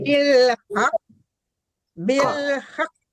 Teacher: jadi iya ditahan dulu habis ditahan dipantulkan lagi gitu karena itu kan huruf qalqalah gitu · jangan at mati total gitu tapi ada pantulan sesudah mati gitu